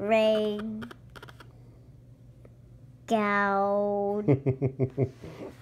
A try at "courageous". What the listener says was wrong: No. In this case, G is kind of like a J. So it's co. Ray. G.